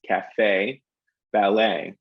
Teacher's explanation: in US English, we hit the second syllable in both of those words, cafe, ballet. They're longer in terms of the time they take up. And I tend to shift my pitch on those as well. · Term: syllable emphasis